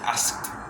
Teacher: Cuando llega asked, la K existe, pero es muy corta.